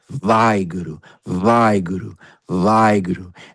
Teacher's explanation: That's why the W or the W in Waheguru is not pronounced as a W, and it's not or a W or a V that you make with your teeth. It's a plosive where the two lips press together. So it's halfway between. It's a soft V or a hard W.